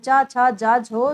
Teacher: च वर्ग को स्पर्श संघर्षी कहा जाता है।